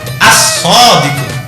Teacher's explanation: SH misalnya Maka bacananya langsung begini asqu enggak boleh alodquu artinya bacaan al-nya hilang dimasukkan ke dalam siddah